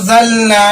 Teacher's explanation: نون کی آواز کو ناک میں چھپا کر پڑھیں گے، نون کے وائس کو ہائٹ کر کے پڑھیں گے۔ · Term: اخفاء حقیقی